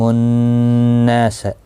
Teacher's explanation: نون مشدد پر غنہ ہوگا، الف مدہ بھی ہے ایک الف کی مقدار کے برابر کھینچ کر بھی پڑھا جائے گا۔